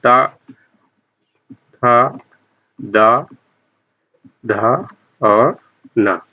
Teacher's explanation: और ता वर्ग ता, था, दा, धा और ना, ये पांचों वर्णों का उच्चारण स्थान दंत होगा।